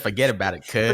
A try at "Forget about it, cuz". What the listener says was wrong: not even saying it right. He keeps the whole thing is that he doesn't say "s" at the end. Forget about it